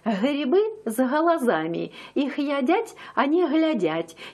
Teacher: глядят их берут они бегут там г произноси уже мягко и такое g называется не взрывным а щелевым